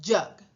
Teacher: Si se fijan dónde están pronunciando, la lengua está bastante plana, tocando una gran área del cielo de la boca.